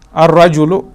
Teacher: ہم نے کیوں اس میں کیونکہ جو را ہے حروف شمسیہ میں سے ہے, اس میں ہم اس میں جو لام ہے وہ حذف ہوتا ہے